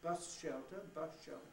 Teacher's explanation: And what happened when I said bus shelter is that I rather quickly but gradually changed my S into a sh. In other words, there's no point where I could decide I'd stopped saying S and started saying sh.